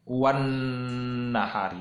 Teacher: Nah, alif lam di situ tidak terbaca. Ya, kita baca wan nahari, bukan wal nahari. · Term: alif lam samsiah